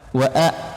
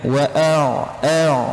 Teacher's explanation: jangan sampai baca huruf ain ini jadi hamzah